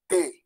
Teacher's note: en la T, apoyamos la punta de la lengua en la parte de atrás de los dientes